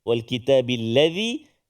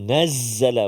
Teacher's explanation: macam sial hujungah keluar sikit Z yang panjang yang tegak tu itu Zai itu tak keluar lidah